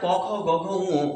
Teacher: আমরা ক বর্গের বর্ণগুলোকে উচ্চারণ করি কন্ঠ থেকে। সেইজন্য এদের অপর নাম কন্ঠবর্ণ।